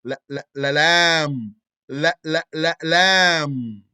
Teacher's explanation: lam is a medium low letter of air suppression, mouth expansion, air diversion, which is the flicking, and dhalq, being on the edge.